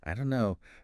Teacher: But we often hear it as, I don't know, the don't and no just merge